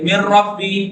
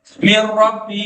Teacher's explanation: بعد ربی نون ساکن کے بعد رے ہے بغیر غنہ کے ادغام ہو جائے گا نون کو رے میں مر ربی اب نون کی آواز کہیں